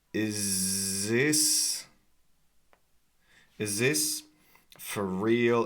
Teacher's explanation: Is this? Okay, you can't even really hear the TH sound here.